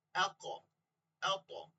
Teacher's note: কলকলা কি, একটু ধাক্কা বা প্রতিধ্বনি করে পড়া